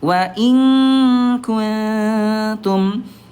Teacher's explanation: Kalau nun mati bertemu dengan ta dia namanya akrab ya dekat. Karena ada kedekatan mahraj tapi tingkat kesamarannya ayah bunda dia a'la tinggi.